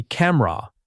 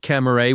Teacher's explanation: It should be camera. Two strong syllables, not camera with three.